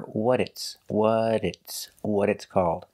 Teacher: when you link the words what it's the T changes to a d and you hear what it's what it's what it's called I